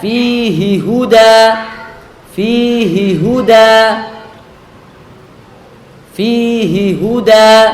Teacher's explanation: seperti fihi Huda fihi Hi ini adalah H damir akan tetapi y-nya itu tidak berharakat ya nya tidak berharakat maka dia tidak dipanjangkan